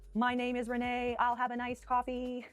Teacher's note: Now, speak an entire sentence on that same pitch like a robot. Monotone. No inflection, no ups or downs, just one flat note.